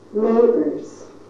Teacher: We're giving factual information, making a statement, so we use falling intonation. Our final content word is neighbors. Stress on the first syllable. Now our voice must go up before it goes down. · So we'll rise on the stressed syllable and then step down to a lower pitch. Neighbors. Now in this sentence, we can't start too low or else you won't hear the falling intonation.